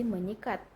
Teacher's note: Dalam penghimbungan prefix imbuhan me pada dasar sikat, maka fonem S pada kata sikat itu diluluhkan dan disenyawakan dengan fonem nasal atau ny prefix me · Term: peluluhan fonem